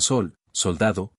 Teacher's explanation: La sameja equivale a la S que en castellano moderno es dental fricativa, sorda como en sol, soldado